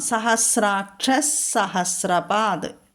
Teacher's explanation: വിസർഗം കഴിഞ്ഞിട്ട് സാ വന്നതുകൊണ്ട് സാ ഇരട്ടിക്കാം, അല്ലെങ്കിൽ സ വിസർഗസ്ഥാനത്ത് ചൊല്ലണം.